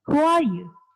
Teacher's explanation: Jadi di awal tinggi, belakang menurun. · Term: Falling intonation